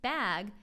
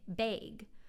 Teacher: in the Midwest, instead of how I pronounce bag, they might say bag, which is higher in the mouth and more towards the front